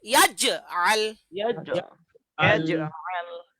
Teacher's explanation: এখানে জিমে জজম আছে কলকলা, জিমে জজম কলকলা। জিমে জজম কলকলা হ্যাঁ, কলকলার মধ্যে আপনার কম্পন হবে